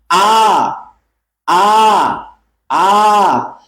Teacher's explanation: একবারে কণ্ঠের গোড়া থেকে হচ্ছে, হ্যাঁ, একবারে আমাদের এই শুরু থেকে হচ্ছে, একবারে নিচ থেকে হচ্ছে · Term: নিম্ন